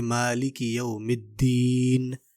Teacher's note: نون کی آواز آنی چاہیے آخر میں، مالک یوم الدین، نون کی آواز آخر میں، یعنی جس پہ بھی وقف ہو اس کی آواز آنی چاہیے۔